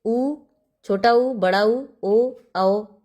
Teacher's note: वर्तुल या गोलाकार जिसको बोलने में हमारा जो ओष्ठ है वो गोलाकार शेप में हो जाता है